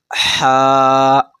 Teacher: آپ ہا ایک دم حلق سے ادا ہوگا